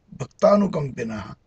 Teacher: The word bhaktanukampinaha is parsed as bhak, heavy, ta, heavy, nu, light, kam, heavy, pi, light, naha, heavy